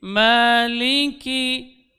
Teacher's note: menempel pangkal lidah pada langit-langit yang lunak dan yang keras bersamaan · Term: huruf Kaf